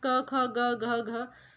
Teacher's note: इन पांचों वर्ण को बोलने में भी हमें कंठ का उपयोग करना रहता है